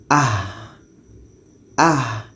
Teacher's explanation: Letaknya ha ini pada pangkal tenggorokan. Jadi kita baca dengan ah. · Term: suara yang mengalir